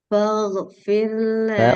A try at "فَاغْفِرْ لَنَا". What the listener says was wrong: Falfi, ketebal. Sambung tanpa jeda. Falfi ini jeda. Falfir, falfir.